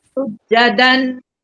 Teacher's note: Sujadan, dia dengung kat, jangan jelaskan tanwin tu. Tuan terus masuk ke nun. Sujadan, dengung macam tu.